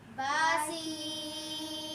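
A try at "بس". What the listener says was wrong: سین کی سیٹی اچھے سے نکالیں، با سین۔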